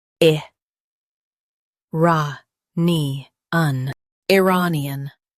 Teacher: Stress ray and keep nian soft.